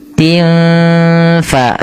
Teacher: cara membacanya samarkan suara tinnya kepada huruf fa dan tidak boleh diperjelas, tidak boleh dibaca tin fa, tapi tin fa, sambil kita dengungkan atau kita samarkan ke huruf fa-nya. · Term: ikhfa hakiki